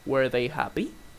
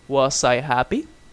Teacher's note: And also the pronunciation changes. You say they were happy with falling intonation, but you use rising intonation when it's a question.